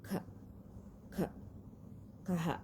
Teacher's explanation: nih huruf k tapi dia dibacanya k k k gitu ya di bacanya k dia ada hembusan udara